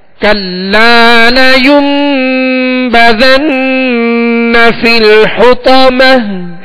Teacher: ہم نے کل لا کے لام کو کچھ کھینچا ہے، ایک الف کی مقدار یعنی 2 حرکت کی مقدار میں ہم نے اس کو دراز کیا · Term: الف مدہ